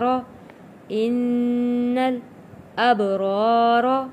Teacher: الف سے پہلے زبر ہے، حروف مدہ ہے، ایک الف کے برابر ہم نے کھینچ کر پڑھنا ہے